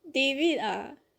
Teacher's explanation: there's an AA at the back of David's name and that's how we would say it in the Singaporean culture